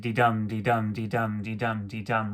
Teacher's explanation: an iamb is a 2-syllable package with the pattern unstressed, stressed